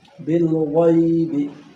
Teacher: गैब भी हुरूफ मुस्तअलिया में से है और इसको भी हमने क्या करना है, मोटा करके पढ़ना है